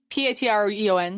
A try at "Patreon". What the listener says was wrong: No, you said you. Patreon. PTRUN.